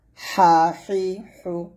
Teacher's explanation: একটু চিকন বাতাস বের করে হার উচ্চারণ করতে হবে।